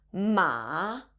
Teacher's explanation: you end up using the third tone, ma, you would be calling your mom a horse.